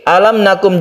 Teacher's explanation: adalah makhraj dari mim itu di bibir alam nakum demikian juga mim mati bertemu Nun ini merupakan izhar syafawi dan tidak berdengung tidak kita dengungkan apabila mim mati